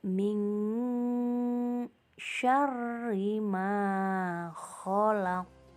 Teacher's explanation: pada lafal min syarri ada nun sukun bertemu dengan huruf shin yang merupakan huruf ikhfa. Maka cara membacanya haruslah disamarkan. · Pada ayat 2 ini juga terdapat bacaan qalqalah kubro di akhir ayat pada lafal khalaq. Maka cara membacanya haruslah dipantulkan.